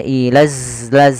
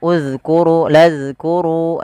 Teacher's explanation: Makhrajnya adalah ujung lidah kita menempel dengan gigi sari atas kita. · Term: huruf zal